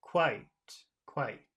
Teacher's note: the ah is pretty big and the I is just a little I